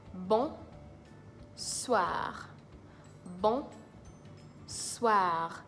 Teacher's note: you have to try as much as possible to roll your R at the end